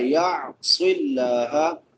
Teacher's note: یا عین حمزہ نہیں پڑھنا، عین نکالنی ہے ، يَعْصِ اللَّهَ، صاد سواد ہے سیٹی والے حروف میں سے · صاد سواد ہے سیٹی والے حروف میں سے بھی اور مستعلیہ میں سے بھی، سیٹی بھی نکالنی ہے اور اس کو پر بھی پڑھنا ہے